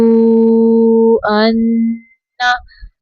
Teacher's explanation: नून मुशद्दद पे गुन्ना करना है